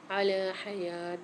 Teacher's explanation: لام کے اوپر کھڑا زبر ہے، لام کو ایک الف مقدار کھینچیں گے، یا کے اوپر بھی کھڑا زبر ہے، یا کو بھی ایک الف مقدار کھینچ کے پڑھیں گے۔